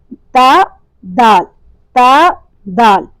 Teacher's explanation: زبان کی نوک اوپر والے دانتوں کی جڑ سے ٹکرانے کے نتیجے میں تا اور دال ادا ہوتا ہے، اور یہ دونوں حروف ادا کرتے وقت ہونٹ چوڑائی میں کھلتے ہیں، کیونکہ یہ حروف استفال میں سے ہیں اور پتلے اور باریک ادا ہوتے ہیں، اور ان کی علامت کیا ہے کہ جو ہمارے ہونٹ ہیں وہ چوڑائی میں کھلتے ہیں۔